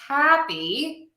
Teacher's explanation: If we have the word happy, hap is my stressed syllable. If I add a prefix, something before the word, I'm still going to stress the hap.